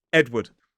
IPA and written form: ˈedwəd (Edward)